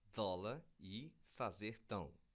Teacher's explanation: além de eu substituir a pronúncia de b, f e p, eu também removi o arredondamento das vogais o e da semivogal o, que aparece lá na palavra pão.